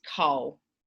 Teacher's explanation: you can hear that that i'm swallowing that final l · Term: vocalized